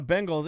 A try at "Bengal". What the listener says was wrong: Bing, Ben. It's B-E-N. Now you said it, but you were saying Bing. You were saying Bing like the search engine.